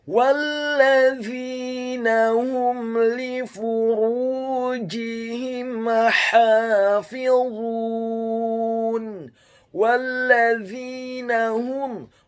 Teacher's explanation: huruf wawunya dibaca fathah, cukup 1 harokat saja karena setelahnya langsung disambung huruf lam yang tasydid dan fathah 1 harokat. Selanjutnya huruf za-nya dibaca tipis, tarqiq, lidahnya agak keluar sedikit, kasrah 2 harokat karena setelahnya ada huruf ya sukun, dan huruf nunnya dibaca tipis, fathah 1 harokat.